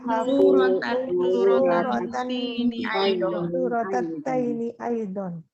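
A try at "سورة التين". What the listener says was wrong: Bukan taini ya, tapi tini. Surotatini. Ya, di situ memang tertulis tertulis di atas huruf. Nah, walaupun di atas huruf tapi di situ masih di bawah tasydid.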